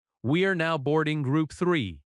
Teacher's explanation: The important words are now, boarding, group, and the number. In natural American speech, we are often reduces to we're.